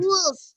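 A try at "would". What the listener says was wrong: Wood. L-nya hilang. Wood.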